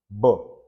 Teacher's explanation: B, your lips. We say that b is a bilabial sound. Labial, lips.